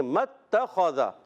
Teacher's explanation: میم کی زبر تا سے مل جائے گی، الف نہیں پڑھیں گے تو پڑھیں گے متخذ.